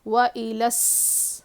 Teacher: واؤ پہ زبر ہے نہیں کھینچیں گے، اور حمزہ پہ زیر ہے، لام کو سین سے ملائیں گے، شمسی کا قاعدہ ہے